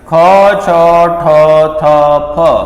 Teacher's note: જ્યારે ઉચ્ચારણ કરીએ ખ છ ઠ થ ફ આ કેવા છે મિત્રો? ખ છ ઠ થ ફ। તો આ છે મહાપ્રાણ